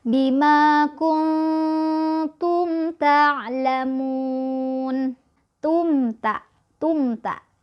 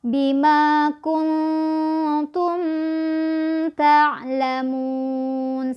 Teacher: dengan takyah tagnya berharokat mim sukun bertemu dengan huruf tak maka mim sukun nya akan kita baca jelas tidak boleh ditahan tidak boleh di dengungkan Seperti apa bacanya seperti ini Bima kungfu MTA ngalamun Tum tak